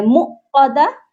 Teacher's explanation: یہاں پر میم کے ساتھ واو مدہ ہے, اس کو ہم نے کھینچ کر پڑھنا ہے